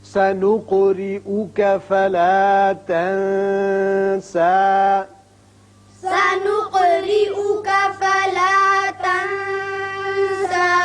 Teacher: قاف ساکن ہے، اس کی صفت قلقلہ ادا کریں، را کے نیچے زیر اس کو باریک پڑھیں گے۔